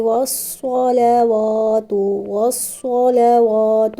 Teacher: والصلوات میں صاد کے اوپر زبر ہے تو صاد کو موٹا پڑھیں گے۔